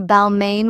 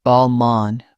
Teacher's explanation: I noticed people say Balmain with a strong N. In French, it's Balmain with the nasal ending